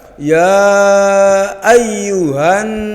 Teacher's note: Tetapi alif lamnya tidak dibaca langsung dimasukkan ke huruf setelahnya. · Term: idgham syamsiah